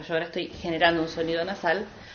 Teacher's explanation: genera este sonido que es un poco más nasal por ejemplo yo ahora estoy generando un sonido nasal en donde parte del aire sale por la boca y parte del aire sale por la nariz